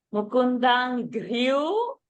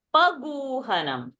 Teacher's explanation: So gru is one Mahaprana and gu is that Alpa Prana.